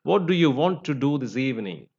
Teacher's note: the first do is actually it is a functional word therefore it is not given stress whereas the second do is the main word that's a condent word and condent word should be given stress